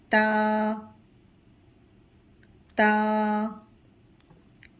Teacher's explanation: اس کے برابر میں آپ دیکھ سکتے ہیں کہ تا کے ساتھ الف بھی دیا گیا ہے، یعنی ہم تا کو 1 الف کی مقدار تک کھینچیں گے